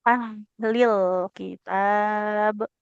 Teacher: huruf hak sukun ini dia punya sifat mengalir suara dan nafas.